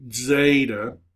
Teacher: Zeta is really a D and Z sound together. Zeta, you're kind of half saying a D and half saying a Z.